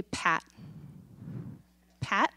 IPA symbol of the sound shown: pʰ